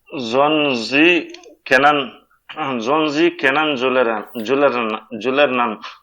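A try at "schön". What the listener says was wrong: Nicht Sohn. It is Shon.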